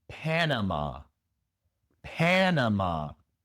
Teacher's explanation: La primera a no se pronuncia a, sino e el sonido corto más común de la a en inglés. E pe la segunda a se pronuncia con la shua.